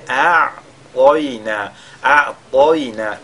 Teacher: Si vous faites a'toina, inna a'toina, ce sera pas correct, mais a'toina, a'toina, le to, n'est-ce pas, il doit être lu avec at-tafkhim en même temps que le ya